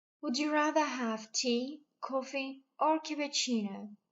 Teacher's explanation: عنا سؤال فيه تخيير فالintonation بالاختيارات الأولى بتكون rising أما بالخيار الأخير فبتكون falling.